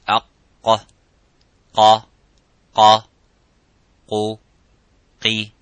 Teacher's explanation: And the letter qaf, it has an echoing sound. It is harf mufakham, it is a little bit strong. So when we pronounce the qaf, we try to pronounce it audibly, and as it is qa, by opening slightly the lips vertically and making that sound and echoing by saying qa.